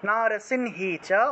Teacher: অনুসার শব্দের মাঝখানে থাকায় নয়ের মতো উচ্চারণ হয়েছে